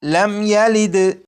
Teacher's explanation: میم ساکن کے بعد یا ہے تو اس میم ساکن میں بھی غنہ نہیں کریں گے